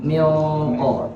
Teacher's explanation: Jadi suaranya itu dengungnya itu dimasukkan ke hidung plus suara dimasukkan ke langit-langit. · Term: ikhfa yang ditebalkan